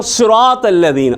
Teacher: صاد ہے تو اس کو پر کر کے موٹا کر کے پڑھنا ہے، اور اس میں سیٹی کی آواز بھی آئے